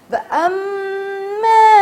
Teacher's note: پہلے اس کے اوپر ہم نے غنہ کر رہے ہیں کیونکہ میم میں مشدد ہے. وَأَمَّا غنہ کے بعد ڈائریکٹ آپ کو مد ہے، مد واجب نہیں ہے، مد لازم نہیں ہے، مگر اسے 2 الف کے برابر لازمی کھینچنا ہے